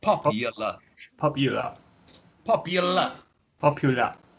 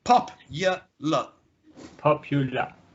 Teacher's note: we add a sound which is not represented by any of the letters, which is a y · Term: intrusion